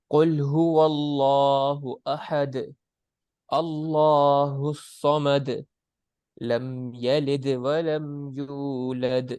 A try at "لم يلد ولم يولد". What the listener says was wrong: یہاں پر زیادہ غنہ نہیں کرنا. لم یلد، لم، لم پہ نا میم کے اوپر ہلکا سا غنہ ہوگا کہ جتنا محسوس نہ ہو پائے، ہلکا سا بس. ٹھیک ہے، لم زیادہ دیر نہیں کرنی.